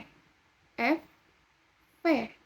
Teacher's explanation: konsonan yang dihasilkan dengan mempertemukan gigi atas sebagai titik artikulasi dan bibir bawah sebagai artikulator. Jadi, gigi atas dan bibir bawah. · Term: konsonan labiodental